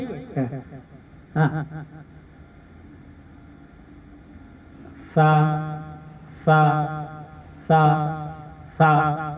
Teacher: अंदरूनी किनारे से जबान की नोक को लगा के सा को हमने अदा करना है और सीटी के बगैर अदा करना है और नरम अदा करना है, इसको मोटा अदा नहीं करना।